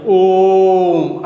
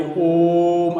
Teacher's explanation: जैसे दीर्घ स्वर में ओ को पढ़ते हैं वैसे नहीं पढ़ेंगे, इस पर हर्ष स्वर का 3 गुना समय लगाएंगे, ओम ऐसे देर तक कहेंगे, तो ओ जो है ये प्लुत स्वर कहलाएगा।